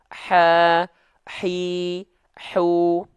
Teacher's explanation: Huruf h kecil dia ketika punya sifat hams, kadarnya dia mengalir nafas tuh.